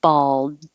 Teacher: you won't hear the duh because i'm holding it in the d position